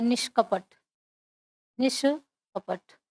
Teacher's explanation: विसर्ग जो है मूर्धन्य श में परिवर्तित हो जाता है, वो भी आधा रहेगा। ध्यान देंगे इस बात को, जो मूर्धन्य श है वह आधा रहेगा। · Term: मूर्धन्य ष